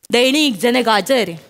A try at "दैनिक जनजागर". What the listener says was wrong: madam दैनिक जनजर नाही दैनिक जनजागर खर